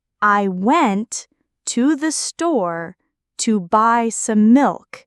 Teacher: The stressed words went store by and milk carry the main meaning. The unstressed words I to the to some connect the ideas. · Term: sentence stress, Sentence stress and rhythm